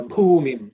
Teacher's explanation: The Bhu is 4th letter in the Pa Varga, so it has to be aspirated.